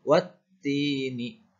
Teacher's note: Bunyinya wa langsung dihubungkan ke huruf ta bertasydid, dibaca wattini.